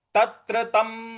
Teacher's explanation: तत्र जो त्र है उस पर थोड़ा सा बल लगाएंगे